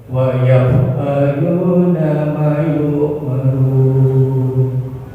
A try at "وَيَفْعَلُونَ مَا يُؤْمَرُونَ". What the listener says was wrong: Ma yu'marun, ma-nya panjang.